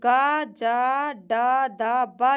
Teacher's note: ग ज ड द ब जो है यह अल्पप्राण सघोष हैं।